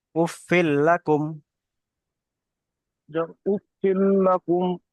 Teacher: মিম নুন জের মিন, মিম লাম জের মিল, মিম লাম, যেখানে যেহেতু এখানে নুন সাকিনের পরে লাম এসছে, তাই নুন সাকিনকে লামের সাথে মিলিয়ে পড়তে হবে। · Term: ঈদগামে তাম